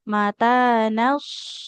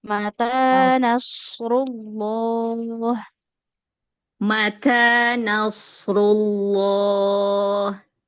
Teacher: Huruf shadnya dia selain harus tebal, mengalir suara dan juga punya sifat shofir